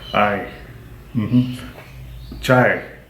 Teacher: So this sound combines a long A and a Y, and it's like the word in English lie.